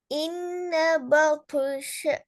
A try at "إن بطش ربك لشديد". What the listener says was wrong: பா அல்ல, ப. இன்ன பطش. பா மாத்தக்கூடாது, பேல இருந்து கொள்ளணுமா? இன்ன பطش ربك لشديد.